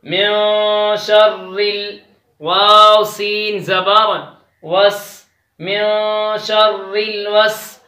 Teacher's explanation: میں پر غنہ کریں گے کیونکہ میں ادھر نون پر جو غنہ ہو رہا ہے وہ اخفا کا غنہ ہو رہا ہے کیونکہ نون ساکن کے بعد شین آیا ہے وہ حروف اخفا میں سے ہے.